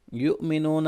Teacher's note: حمزہ ساکن کو جھٹکا دے کے پڑھیں گے، وہ مدہ ہے آگے۔